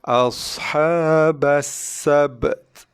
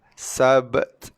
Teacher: Ba mati qalqalah betul ada hembusan nafas sikit keluar.